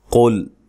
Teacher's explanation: قاف کو موٹا ادا کرنا ہے، موٹے حروف میں سے ہے قل، لیکن لام کو باریک پڑھنا ہے، قاف کے ساتھ لام موٹا نہ ہونے پائے۔